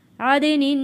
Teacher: دال کی آواز واپس پلٹ کر آئے گی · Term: حروف قلقلہ